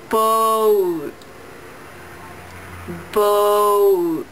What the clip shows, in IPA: boʊt